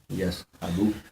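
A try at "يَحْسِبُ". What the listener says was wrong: यस नहीं,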